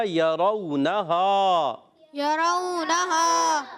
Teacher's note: نون پر بھی زبر ہے، نون کو نہیں کھینچنا مگر ہا کو ایک الف کھینچیں گے